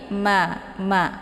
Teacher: kedua bibir ditekan secara bersamaan ya, antara bibir atas dengan bibir bawah ditekan secara bersamaan, namun tekanan huruf mim ini lebih lemah daripada huruf ba ya. Jadi jangan dibaca matha ya, jangan matha, tapi ma bacaannya ringan ya.